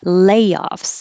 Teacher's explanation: stress on the first syllable because it's a noun